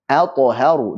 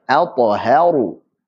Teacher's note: Di sini ada huruf hamzah a yang ketemu dengan ta, kemudian juga ada huruf ha yang dibaca dengan tipis, ketemu dengan ra yang tebal